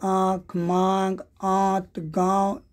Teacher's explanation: और एक होता है अनुनासिक, ये जैसे ये नाक और मुंह से इसका उच्चारण किया जाता है। इन ध्वनियों का उच्चारण नाक और मुंह से किया जाता है